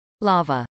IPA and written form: lˈɑːvə (lava)